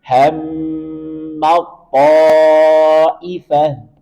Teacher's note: Perhatikan ta bertemu dengan po. Langsung masukkan ke po, seolah-olah huruf ta-nya hilang.